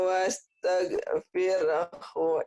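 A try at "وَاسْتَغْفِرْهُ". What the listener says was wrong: Wastaghfirhu, jangan wastage, wastaghfirhu.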